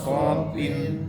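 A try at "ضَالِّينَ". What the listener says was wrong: Kembalikan jangan salah juga, kho-nya jadi tipis. Dari suara tidak berdengung, kho menjadi dengung.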